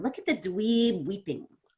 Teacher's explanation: So I'm going to stretch out dweeb more, and weeping is a little bit quicker.